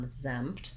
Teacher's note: where my stress starts is on my Z sound, exempt. So ig is short and lax, exempt.